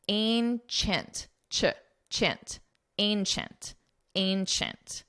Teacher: And it's a very nasal A sound